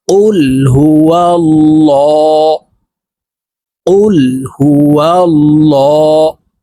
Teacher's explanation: আল্লাহ শব্দের আগের হরফে জবর অথবা পেশ হইলে এই লামকে ল অর্থাৎ মোটা করে পড়তে হবে